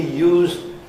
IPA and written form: juːzd (used)